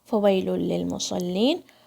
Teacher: فا کے اوپر فتحہ ہے، واو کو وی کی طرح نہیں پڑھنا ہے، فوئی ایسے نہیں پڑھنا ہے، کیونکہ فا کی آواز ہونٹ اور دانت سے آتی ہے مگر واو کی آواز نہیں آتی ہے ہونٹ اور دانت سے، صرف لپس کا کام ہے، دانتوں کا کوئی کام نہیں ہے واو کی مخرج میں.